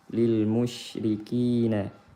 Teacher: Ri dibaca tarqiq karena berharokat kasrah